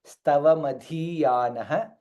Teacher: ಧ ಮಹಾಪ್ರಾಣ ಈ ಕಾರ ದೀರ್ಘ